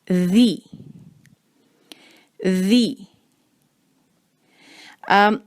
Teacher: ذیل پر ہے زیر تو آواز کو ہم رکھیں گے باریک، ذی ذی۔ اور ذال جو ہے اس کی آواز کو ہم رکھیں گے نرم۔